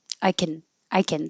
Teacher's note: The can will just get shrunken down to a kn sound.